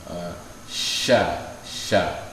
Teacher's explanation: Cara menyempurnakannya dengan sedikit membuka sya. Makhrajnya di mana? Wastul lisan, di tengah lidah. Jadi kalau ini lidah, di tengah ini shin, kemudian dia menekan ke langit-langit atas.